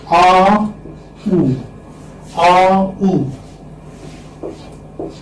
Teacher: AU is a glide from back open unrounded vowel to back rounded vowel. U, because it is U, back rounded vowel between close and half close position.